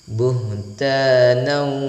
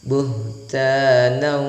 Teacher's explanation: tanwin berjumpa bertemu dengan huruf wau maka itu pemirsa sahabat al-qur'an hukumnya dibaca sebagai idgam bighhunnah jadi mendengungkan meleburkan dan menahannya